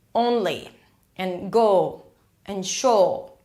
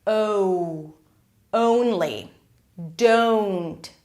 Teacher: A long vowel, a changing vowel, and you're transitioning from the O to the U. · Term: O diphthong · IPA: oʊ